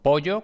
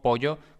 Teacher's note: el dorso de la lengua se eleva para tocar el paladar a ambos lados de la boca dejando en el centro una abertura alargada que permite el flujo continuo de aire sin que se produzca turbulencia la punta de la lengua se